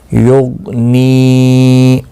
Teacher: غین مستعلی ہے، پر پڑھنا ہے، اور یہ جو ساکن ہے اس پر قلقلہ نہیں ہونا چاہیے کیونکہ حروف قلقلہ میں سے غین نہیں ہے۔ یغنی، نی یا مدہ بھی ہے، ایک الف کی مقدار کے برابر کھینچ کر پڑھنا ہے